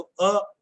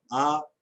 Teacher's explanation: इनके बोलने में थोड़ा सा मुंह का ज्यादा खुलने का फर्क है